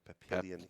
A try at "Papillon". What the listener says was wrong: Yeah, there's no. It's Papillon. It's Papillon, mate. There's no I. There's no I before the O.